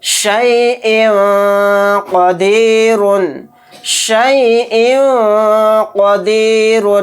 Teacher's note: شیء قدیر، شیء قدیر، تو یہاں پر دیکھیں حمزہ کے نیچے 2 زیر ہے، یعنی تنوین، تنوین کے بعد قوف آ گیا، قوف اخفا کے 15 حروف میں سے ایک حرف ہے، تو حمزہ 2 زیر ان کہتے ہوئے جو لاسٹ میں نون کی آواز آ رہی ہے تو اسی کو ناک میں چھپا کر اخفا کرنا ہے · نون کی آواز کو ناک میں چھپا کر اخفا کے ساتھ پڑھیں گے